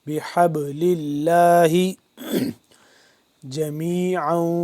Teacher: با یہاں پہ ساکن ہے تو اس پہ قلقلہ کریں گے